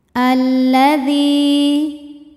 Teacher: lam yang sukun tidak dibaca sehingga kita langsung masuk ke lam kedua atau diidghamkan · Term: alif lam syamsiah